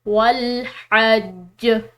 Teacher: للناس والحج، یہاں پر آخر میں جو یہ وقف مطلق کی علامت آ رہی ہے تو یہ جیم جو ہے یہاں پر قلقلہ کے ساتھ ہے، تو اس پر ہم نے قلقلہ بھی کرنا ہے اور اس کو وقف کے ساتھ بھی ادا کرنا ہے۔